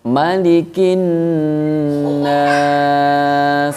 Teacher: Nah, di sini teman-teman ada alif lam lagi, namun tidak dibaca karena bertemu dengan huruf samsiyah ya, yaitu nun. · Ada nun bertasdid ya, dibaca gunnah, mendengung dengan panjang harokat 2 harokat. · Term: alif lam syamsiyah